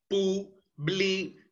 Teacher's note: ¿Y dónde se encuentra el mayor impulso de voz? En la última sílaba. D. Ahí está presente entonces el acento prosódico.